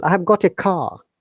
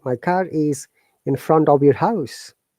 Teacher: we also pronounce letter r if the next sound or alphabet is vowel